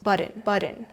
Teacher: T softens and the second syllable almost disappears.